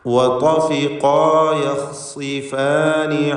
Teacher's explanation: ഇതിലും ഖാഇന് തഫ്ഖീമുണ്ട്, സ്വാദിന് കസ്ര ആയതുകൊണ്ട് കുറഞ്ഞ തഫ്ഖീം അതിനും നൽകണം